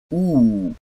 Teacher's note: Closed back rounded vowel